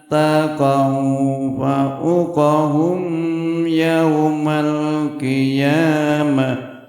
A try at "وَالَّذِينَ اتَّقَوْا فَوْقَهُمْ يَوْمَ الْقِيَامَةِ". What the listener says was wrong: Nah, faunya suka ketambahan u, fa'u. Mungkin ragu ya, mungkin bisa ragu, mungkin terhenti secara mendadak, tidak masalah, itu ada uzur. Tapi ya pada sejatinya bacaannya fau. Baca yang sebenarnya fau.